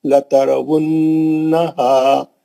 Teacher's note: 2 چشمی ہا ہے, بغیر ایفرٹ کے سینے کی آواز سے پڑھیں گے, مد اصلی کریں گے.